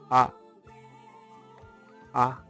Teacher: So the left first letter there is pronounced a a as we have it in father even though it's not as long as the one we have in father